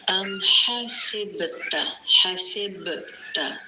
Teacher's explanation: با پر جزم قلقلہ ہوگا